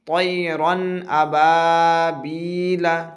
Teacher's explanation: ظاہر کر کے جلد پڑھیں گے بغیر گنہ کے ساتھ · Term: اظہار